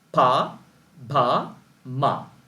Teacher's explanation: For example, if you close your two lips and then release, then you will get a sound like pa or ba or ma. I repeat, if you close your two lips and release, then you will get sounds like pa, ba, ma